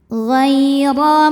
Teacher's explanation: huruf ra dibunyikan secara tafkhim karena berbaris fathah, maka dibacanya tebal